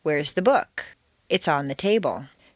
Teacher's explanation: the first is stressed on the most common everyday word book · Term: normal intonation